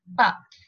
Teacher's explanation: closing my lips and then opening them all of a sudden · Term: stops